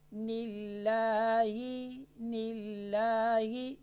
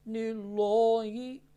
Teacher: لفظ اللہ سے پہلے زیر ہو تو لفظ الجلالہ کا جو لام ہے یہ باریک پر آ جائے گا